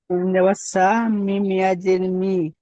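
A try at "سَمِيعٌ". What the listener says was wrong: হুম। মিম ইয়াজের মি কেন হবে ভাই? ইয়াস ইয়া মাদ্দা।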